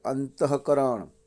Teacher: વિસર્ગને હ બોલાય